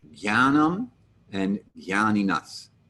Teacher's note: the J with the N next to it, as a general rule, will lose its J-ness, J, and become more of a G sound, gya